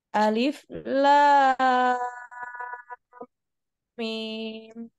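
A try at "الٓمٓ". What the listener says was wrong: Cukupkan sampai 6 ya, Ukhti. Nah, mimnya tadi belum sampai 6 harokat. disempurnakan.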